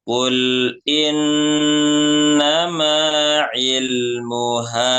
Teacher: Ilmuha setelah huruf H itu ada alif ya maka dibaca panjang dua harokat.